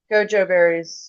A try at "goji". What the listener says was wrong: Goji. Well, it's an I at the end. Goji. I is like it.